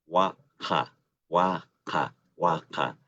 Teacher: se puede pronunciar la a como a un poquito más entre la e y entre la a y la e a más abierta